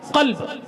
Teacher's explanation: اسی کو ذرا سا حلق کے اندر لے کر قلب بولا جائے بڑی کاف سے